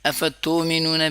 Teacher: حمزہ جب ساکنہ ہوتی ہے تو اس میں جھٹکا ہوتا ہے